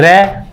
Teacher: प्रकंपित इसलिए बोलते हैं क्योंकि जीभ में कंपन पैदा होता है। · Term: प्रकंपित व्यंजन